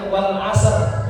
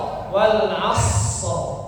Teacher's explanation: Suara huruf shad habis baru ro.